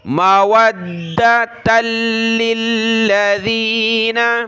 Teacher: دونوں لاموں کو سخت کرنا ہے تشدید کی وجہ سے